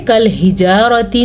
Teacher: रा को पुर पढ़ना है, रा पे ज़बर की वजह से